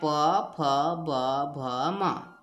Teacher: इसको उच्चारण स्थान है दांत त थ द ध न और पांचवा वर्ण वर्ग है आपका ओष्ठ वर्ग उच्चारण स्थान है होठ · उच्चारण स्थान है होंठ ओष्ठ, और इसके अंतर्गत आते हैं प फ ब भ म